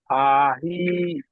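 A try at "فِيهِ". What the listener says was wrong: ফা ইয়াজের ফি হচ্ছে আপনার উচ্চারণ সময় ফা হি হয়ে যাচ্ছে, ফা হয়ে যাচ্ছে। তাহলে বানান যেটা হবে উচ্চারণে সেটাই আসবে। আমি যদি এখানে বানান করি ফা ইয়াজের ফি, তো উচ্চারণের সময় ফি বলতে হবে আমাকে। আমি উচ্চারণের সময় যদি বলি যে ফা, তাহলে ভুল হবে।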